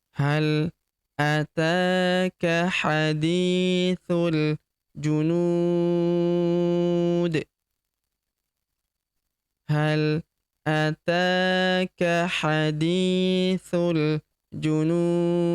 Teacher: Huruf nu kita panjangkan 2, emp atau en harakat karena di depan huruf nun terdapat wau sukun sebelum huruf pemberhentian dan huruf pemberhentian huruf di kita sukunkan atau kita matikan. Dan karena dia sukun atau mati maka kita pantulkan atau kita qalqalahkan.